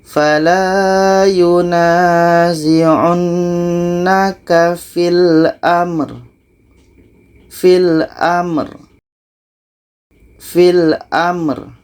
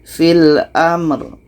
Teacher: Ro ini sifatnya tawassut, mesti kita alirkan.